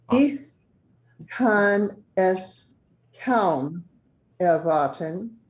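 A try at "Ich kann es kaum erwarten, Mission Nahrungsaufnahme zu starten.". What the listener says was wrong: Sehr gut.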